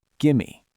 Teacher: The v drops out and the m takes over.